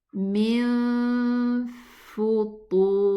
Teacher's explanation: We go to the exit of the fa and pronounce the ghunna of the noon. Min futur. The ta is elevated and the ra also is elevated.